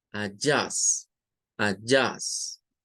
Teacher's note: En la palabra ajustes aparece primero en la A y aparece en la U. O sea, aquí hay dos schwas. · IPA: /ə/